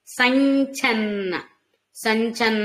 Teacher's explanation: చ ఉంది అనుస్వారం ఉంది కాబట్టి మనకి ఏమనుకున్నాం చ యొక్క అనుస్వార ఉచ్చారణ చ ముందు వచ్చే అనుస్వార ఉచ్చారణ న్ అనుకున్నాం